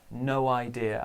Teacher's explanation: There's linking here, isn't there? It's a W sound.